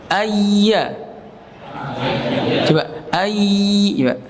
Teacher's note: terasa ada lidah yang tengah menempel dengan langit-langit atas bergetar